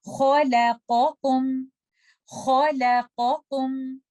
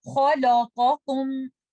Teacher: Khalaqakum. And do not make letter lam heavy because of kha and qaf. Do not say khalaqakum because lam is a light letter.